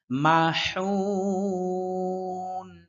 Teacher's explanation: হা এর উচ্চারণটা স্পষ্ট করতে হবে হা কণ্ঠনালীর মধ্যখান থেকে হা এর মত উচ্চারণ না হয় যে মাহুন মাহুন যেন না